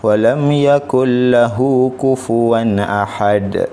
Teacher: nun mati dia terus gabungkan ke dalam huruf lam. Jadi dia gabungkan tanpa dengung. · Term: idgham bila gunnah